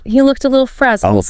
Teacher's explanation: that T in the middle between vowels, it often softens to sound like a d.